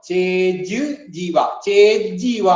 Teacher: അപ്പൊ ഏതായാലും നോ ചേത്, ചേത്, ചേത് എന്ന് കഴിഞ്ഞിട്ട് പിന്നെ ജീവാ എന്നാണ്. ചേത് ജീവാ കൂടി വരുന്ന സമയത്ത് ഈ ത് എന്നുള്ളതും ജ് എന്നുള്ളതും കൂടി കൂടുമ്പോ അവിടെ തകാരത്തിന്റെ സ്ഥാനത്തും കൂടെ ഒരു ജ് എന്നായി മാറും. അപ്പൊ ചേജ് ജീവ, ചേജീവ എന്നാണ്.